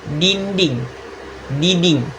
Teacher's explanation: Cara kita melakukannya itu bagian pangkal lidah, akar lidah diangkat menyentuh langit-langit, langit-langit mulut yang lunak bagian atap mulut paling belakang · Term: dorso felar